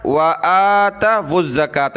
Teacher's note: واو کو یہاں زا کے ساتھ ملائیں گے